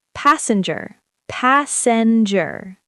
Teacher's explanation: Three syllables. Stress on the first.